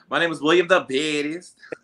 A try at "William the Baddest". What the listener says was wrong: The Baddest. You gotta put emphasis on the Baddest.